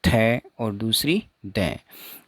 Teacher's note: अब जब हम थ या द का उच्चारण करेंगे तो जीभ का आगे वाला भाग है वो ऊपर वाले दांतों पे जाकर टकराता है। तो इसमें एक्टिव आर्टिकुलेटर तो टिप ऑफ टंग होगा, और पैसिव आर्टिकुलेटर हो गया अपर फ्रंट टीथ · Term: डेंटल